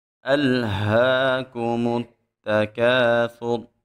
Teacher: حمزہ کو خوب سختی سے ادا کریں گے، اس ہا کو موٹا پڑھیں گے۔